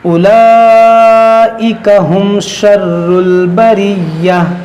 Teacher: میم ساکن کے بعد شین ہے, یہاں پر اظہار شفوی ہوگا